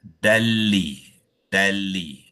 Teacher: tanwin fathatain tu dibaca terus kepada lam, membabitkan idgham bila ghunnah